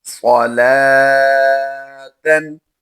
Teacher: لام کھڑی زبر لا کو ہم لمبا کر کے پڑھیں گے۔ عموماً بچے واؤ کھڑی زبر وا پڑھ دیتے ہیں، تو یہاں پر یاد رہے یہ جو کھڑی زبر ہوتی ہے یہ ہمیشہ لام پر ہوتی ہے اور واؤ خالی ہوتا ہے، تو یاد رہے صلاتن لفظ جو ہے اس میں لام کھڑی زبر لا ہوتا ہے، صلواتن نہیں لفظ ہوتا۔